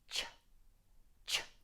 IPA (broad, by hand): tʃ